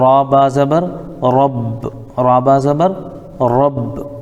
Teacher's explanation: تو ہم را کو ملائیں گے با میں، اور یہاں پر یہ بھی دیکھیں گے را کے اوپر زبر ہے اس لیے را کو ہم پر پڑھیں گے. تو را با زبر رب، را با زبر رب، الحمد للہ رب.